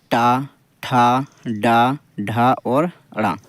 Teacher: का पूरा टा वर्ग हम मुर्धा यानी मुख से बोलेंगे ज टा ठ ड ढ और ड़ रा और श इनका उच्चारण स्थान दोस्तों मुर्धा हो जाएगा